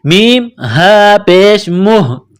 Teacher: میم کو ہا کے ساتھ پلس کرنا ہے، یہ چشمے والی ہا اس کو کہتے ہیں، گول ہا، منہ سے ہوا نکالنے کی طرح صرف اس کو پڑھتے ہیں